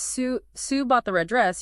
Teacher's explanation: If you stress Sue bought the red dress, you're implying it wasn't Ellen or Jane.